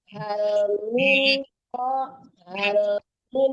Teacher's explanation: tidak ada dengung, tidak ada samaran ya. Jangan tertahan. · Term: izhar